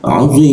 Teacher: bertemu dengan dua huruf mati maka dipanjangkan tiga ketukan